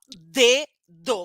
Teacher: também é plosiva ó D do consigo prolongar o som não o ar explode é curtinho e é sonoro porque faz a força no pescoço sai Pouco vento